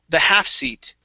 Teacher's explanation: the stress is on half instead of seat